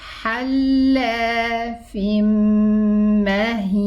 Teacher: And we find a shadda above the mim, meaning that this is a complete idgham. And this ghunna that we are pronouncing belongs to the mim and not to the noon sound of the tanween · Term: idgham, but with ghunna